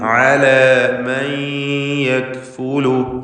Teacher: യായിലേക്ക് നൂനിനെ ഭാഗികമായി ലയിപ്പിച്ച് മണിക്കുക. മൻ യക്ഫുലു എന്ന് പറയരുത്.